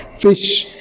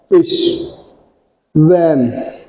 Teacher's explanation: इसके बाद सेकंड जो टाइप है वो है लिबियोडेंटल्स। हमारे नीचे वाला होंठ हमारे फ्रंट टीथ के साथ, अपर फ्रंट टीथ के साथ टच होता है, अपर front teeth plus lower lip.